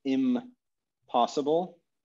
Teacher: this nasal sound assimilates to the following consonant · the N moves forward in the mouth to anticipate the coming P sound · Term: assimilation